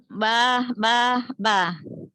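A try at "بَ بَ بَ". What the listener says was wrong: Ba-ba-ba, bukan bah-bah-bah ya. Jangan ada hanya. Abah nanti. Ba-ba-ba ya, jangan ada haknya ujungnya.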